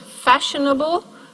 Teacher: So, in the word fashionable, we have the fa, the first syllable is stressed, but then we have sh, n, bl, three syllables that are weak, sh with a schwa, n, also schwa, and bl, we have a syllabic L in the final syllable as its nucleus.